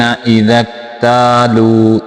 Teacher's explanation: تا کو لمبا کریں گے کیونکہ یہاں پہ الف مدہ ہے۔ الف مدہ کہتے ہیں الف ساکن ہو، اس سے پہلے لفظ کے اوپر زبر آ جائے تو اس کو الف مدہ کہتے ہیں، اس کو لمبا کر کے پڑھتے ہیں۔